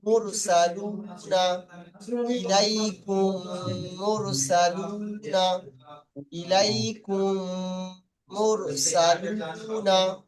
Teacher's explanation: প্রথম মিমটাকে দ্বিতীয় মিমের সঙ্গে মিলিয়ে গুন্না সহ পড়তে হবে